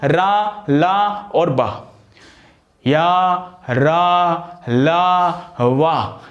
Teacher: सघोष है, क्योंकि सभी को जब बोलते हैं तो स्वर तंत्रियों में कंपन होता है।